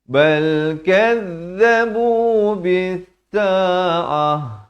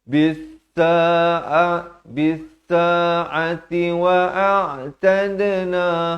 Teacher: Kalau waqaf di sini, sa'ati jadi sa'ah. Kalau nak wasal barulah dia kekal bunyi ta. Jadi bis-sa'ati wa a'tadna.